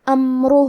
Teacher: یہاں را کا حکم ہے تفخیم تو ہمیں را کو موٹی آواز میں بھی پڑھنا ہے۔